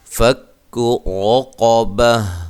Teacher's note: را قاف دونوں کو موٹا ادا کرنا ہے